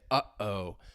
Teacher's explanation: your glottis is closing, it's blocking the flow of air, and that is a glottal stop.